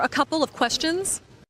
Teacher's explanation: >> A couple of is one of those expressions native speakers usually say quickly. Instead of saying of, we just say uh because it's quicker.